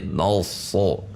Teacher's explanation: Biasanya jebakannya nanti na-nya ikut tebal atau dibaca seperti no so.